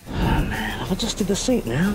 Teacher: quand il y a un vrai d devant le J, on ne va pas prononcer deux fois le son d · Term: le son dj